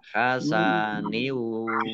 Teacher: Kasroh tanwin bertemu dengan huruf wawu, bacaan idgham bi gunnah. Idgham masuk bi dengan gunnah mendengung. Masuk dengan mendengung wawu. Ya, langsung masuk ke huruf wawu, kasroh tanwinnya tidak dibaca.